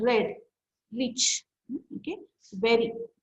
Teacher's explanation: Retroflex sound, our tongue is curled back, or it is in concave shape during articulation.